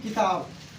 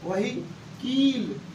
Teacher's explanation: किताब ई पे कम भार पड़ रहा है, वही कील ई पे ज्यादा भार पड़ रहा है। यही ह्रस्व और दीर्घ होता है, समझे।